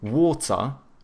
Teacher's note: Whereas like the British, they tend to have either hard T's or they do like the glottal T, so but then they do a schwa instead of pronouncing the R, so they say water or they say water.